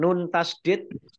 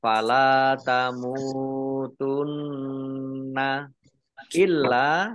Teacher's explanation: nun tasdid dibaca gunah atau mendengung, ditahan 2 harokat, kurang lebih 2 harokat.